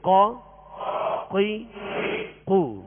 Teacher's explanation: قاف کا جو مخرج ہے زبان کی جڑ اور اوپر کے تالو کے نرم حصے سے قاف ادا ہوتا ہے. یہ مخارج کی لسٹ میں آپ دیکھیں گے قاف دو نقطے والا، زبان کی جڑ، تالو کا نرم حصہ.